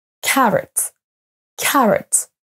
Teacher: le O ne se prononce pas comme un o à la française mais comme un e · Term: son schwa